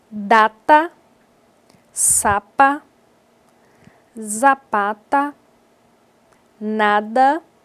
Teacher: dental o articulador ativo é a língua na sua parte superior